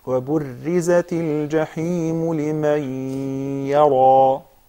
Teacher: the ya would follow the same tafkhim of the letter that precedes it, which is ra. Okay?